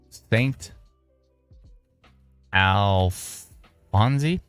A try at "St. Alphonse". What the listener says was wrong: Don't pronounce the E. Just St. Alphonse.